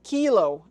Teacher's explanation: Kilo is pronounced Key-Loh and not Kill-oh.